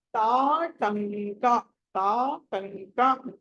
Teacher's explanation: తా తర్వాత మళ్ళీ అనుస్వరం వచ్చింది, కా వచ్చింది కాబట్టి కవర్గంలోనే పంచమాక్షరం రావాలి